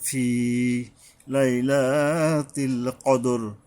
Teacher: বড় কফ, মানে হলকের গোড়ার থেকে শক্তভাবে মোটা করে আদায় হবে, বড় কফ। এটা উচ্চারণে সাবধান হইতে হবে, কারণ আর একটা কাফ আছে আমরা জানি।